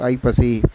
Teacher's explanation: ஒரு வார்த்தைக்கு முதல்ல வரும்பொழுது தனது இரண்டு மாத்திரை அளவிலிருந்து அரை மாத்திரை குறைந்து ஒன்றரை மாத்திரை அளவு ஒளிக்கும் · அதே ஐகாரம் என்பது சொல்லின் முதலில் வரும்பொழுது 1.5 மாத்திரை அளவு குறைந்து ஒலிக்கும்.